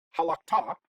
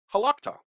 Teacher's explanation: We can't really reduce because it starts with a consonant, so instead, we're just going to take our accent and shift it from the final syllable to the second to final syllable